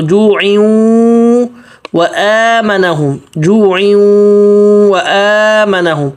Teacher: واو کے بعد حمزہ ہے، حمزہ کے کھڑا زبر 1 الف مد کے برابر کھینچنے · تنوین کے بعد واو آ رہا ہے، دیکھیں ادھر بھی غنہ ہوگا